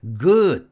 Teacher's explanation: 발음 기호만 보고 g 굿을 룩처럼 짧게 발음하라고 가르치는데 절대 아닙니다 g 굿은 유성음 드 때문에 장모음 화가 적용돼서 good 하고 길게 발음해야